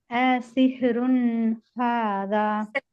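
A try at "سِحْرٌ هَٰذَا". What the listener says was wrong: அப்படிங்கிறது கல்கலா பண்றீங்க சிஸ்டர். சிஹ் அப்படியே மூச்சை பிடிச்சுக்கோங்க. அஸ்ஹ்ருன் ஹாதா.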